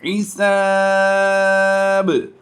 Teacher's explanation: با کی پیش کو ہم نے وقف کی وجہ سے جزم سے کنورٹ کر کے پچھلے حرف سے ملا دیا